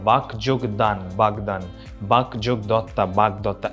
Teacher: প্রথম অঘোষ অল্পপ্রাণ ধ্বনিটা ঘোষ অল্পপ্রাণ রূপে উচ্চারিত হয়, অর্থাৎ যেটা ছিল অঘোষ সেটা হয়ে গেল ঘোষ। ক যোগ দ হয়ে গেল গ যোগ দ, বাক যোগ দান বাগদান, বাক যোগ দত্তা বাগদত্তা।